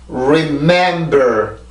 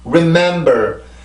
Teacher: 순수 음절의 시작이 R 발음인데 이때도 입술은 나옵니다. 아까도 봤지만 입술은 나오지만 아까처럼 강한 공기는 나오지 않아요.